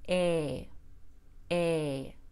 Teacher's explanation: long a is a mid vowel so the tongue is in the middle of the mouth and the mouth is halfway open